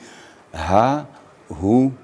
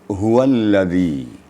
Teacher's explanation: makharijul hurufnya mendekati dada di pangkal tenggorokan dia harus getaran ada getaran apabila kita membaca huruf ha jadi ha hu gitu he jadi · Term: Ha damir, H damir